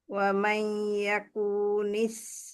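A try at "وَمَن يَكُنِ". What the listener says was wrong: পুয়ে মাদ দিচ্ছেন, পুয়ে মাদ ডিলিট করেন, কুনি কুনি কুনি। ইয়াকুনি ইয়াকুনি ইয়াকুনি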